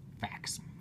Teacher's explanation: I don't typically pronounce the T in fact um so I would write f a ckss fact um you